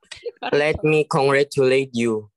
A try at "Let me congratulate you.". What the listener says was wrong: Kamu pronunciation oke nih.